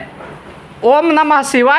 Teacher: ओम जो है ओ जो है लगातार लंबे समय तक बोला जाता है इसलिए शुद्ध ओम हो जाता है ये ठीक है तो स्वर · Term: प्लुत स्वर